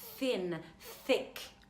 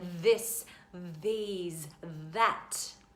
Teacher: a non voiced sound just airflow and then a voiced sound